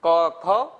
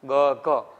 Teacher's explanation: ક, ખ કરતા ગ, ઘ માં વાઇબ્રેશન વધુ થશે